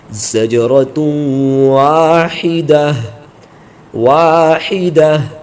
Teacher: جب بھی گول تا پر وقف کریں گے تو یہ ہائے ساکنہ سے بدل کر پڑھا جائے گا۔ اب یہ تا نہیں بلکہ اس کو ہا پڑھیں گے، زجرۃ واحدہ واحدہ، فإنما هي زجرۃ واحدہ۔